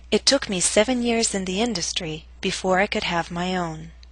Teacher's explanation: But note that your voice must reach a lower note on own compared to industry. Own must reach a lower pitch to signal the end of the statement. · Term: falling intonation